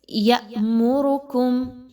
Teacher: یاد رکھیے حمزہ پر جب بھی جزم کی علامت ہوتی ہے تو ہم اس کو جھٹکا دے کر پڑھتے ہیں